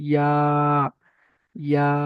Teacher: আচ্ছা, ইয়ার নিচে দেখেন এক আলিফ লেখা রয়েছে, তাহলে এখানে এক আলিফ পরিমাণ টান দিয়ে পড়তে হবে